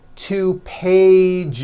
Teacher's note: Okay, so let's look at the word page, for example, which ends in a voiced sound. 1 page becomes 2 pages with that voiced Z. 2 pages. It's not 2 pages, unvoiced, no.